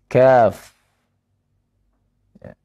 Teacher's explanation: Yang makhrajnya tepat di bawah makhraj dari huruf Qaf. Tepat di bawahnya.